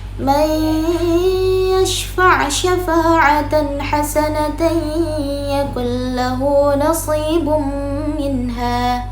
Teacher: Dia memasukkan, jadi seakan-akan suara huruf nun sukun itu menghilang. Dia karena kita memasukkan huruf nunnya kepada huruf setelahnya. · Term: idgham